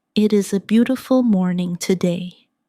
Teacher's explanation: Feel the flow from beautiful to morning. There's a tiny connection there where the sound moves smoothly without a pause.